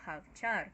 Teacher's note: havchar, que tem a tônica transferida para o char, porque tem vogal duplicada